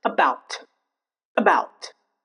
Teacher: where A will be reduced to schwa sound